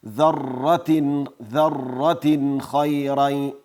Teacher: اظهار دا معنی چې نون به له خپل مخرج نه واضح او ښکاره تلفظ کوو، غنې صفت به هم ورسره نه وي